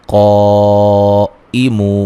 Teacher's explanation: قائمو مو و مدہ ہے، حمزہ کو تحقیق سے پڑھیں گے، مو و مدہ ہے، وقفاً بڑی مد کے ساتھ پڑھ سکتے ہیں۔